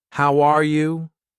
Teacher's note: when I say, How are you? my voice goes up at the end.